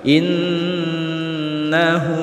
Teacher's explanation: in nah Nun tasydid hukum bacaannya adalah guna musyaddadah secara bacanya Nun tasydid dibaca dengung selama dua harokat